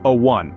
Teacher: which is a vowel it doesn't start with a vowel sound the pronunciation of one starts with a w sound which is a consonant sound